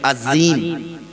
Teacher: عظیم جب ہم کہہ رہے ہیں تو اوپر نیچے کے دونوں دانت مل کر اور زبان کی نوک بیچ میں لگ رہی ہے